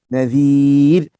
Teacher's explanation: Pastikan zal di baris bawah. Sebutan dia hujung lidah, hujung gigi.